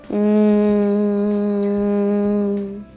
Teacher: língua tocando nos dentes superiores lábios entreabertos o som é nasal